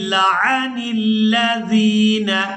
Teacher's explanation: نون کو لام مشدد کے ساتھ ملائیں گے